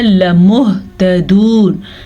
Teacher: لمہتدون، لام کو لمبا نہیں کرنا، لام کے اوپر زبر ہے. اگر ہم زبر کو نہیں پڑھیں گے، کھڑی زبر پڑھیں گے تو ہم بہت بڑی غلطی کر دیں گے.